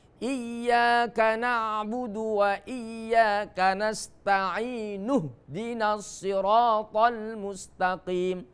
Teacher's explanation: kalau di posisi di tengah kalimat hamzanya tidak dilafalkan, tapi kalau di awal kalimat itu hamzanya dilafalkan karena untuk menghidupkan huruf yang berharokat sukun di awal kalimat. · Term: hamzah wasol